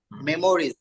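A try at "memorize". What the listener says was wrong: মেমোরাইজ, মেমোরিজ না মেমোরাইজ। এটা যেরকম রিসাইট, এটা হচ্ছে মেমোরাইজ, মুখস্থ করা।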